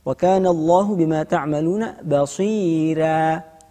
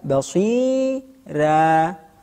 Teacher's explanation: huruf ra fathatain, ya, sebelumnya terdapat ya, sehingga kita tarqiqkan